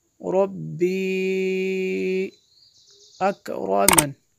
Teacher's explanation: اس پہ جو مد ہے یہ مد منفصل ہے کیونکہ حمزہ دوسرے کلمے میں ہے